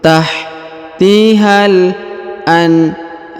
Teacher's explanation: huruf ha langsung sambung masuk ke huruf alif lam qamariyah ini ya, sambung masuk ke sini.